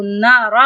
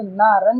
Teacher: جب ہم رکیں گے تو نارا پڑھیں گے، لیکن جب ہم ایک ساتھ ملا کے پڑھیں گے تو نارن پڑھیں گے